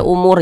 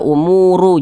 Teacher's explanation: Jangan dibaca umuru jangan tapi huruf r kita sukunkan